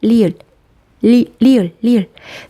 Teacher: 발음할 때 공기가 양옆으로 흐르는 소리, 유음에 해당됩니다. · 자, 발음해보면 혀끝이 치조음, 우리 치조음 위치인데요. 니은 디귿보단 약간 뒤쪽에서 혀끝이 닿으면서 나는 소리입니다. 그래도 치조음에 해당이 되고요.